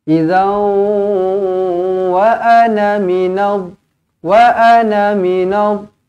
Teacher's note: Nombor rindu di sini panjang 4 ataupun 5 harakat. Idzau, tanwin masukkan terus ke dalam huruf waw, dimuncungkan bibir, didengungkan 2 harakat